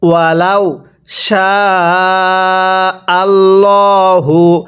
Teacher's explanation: এই শিনের মধ্যে আমরা 4 আলিফ টেনে পড়ব।